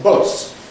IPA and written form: bʊs (bus)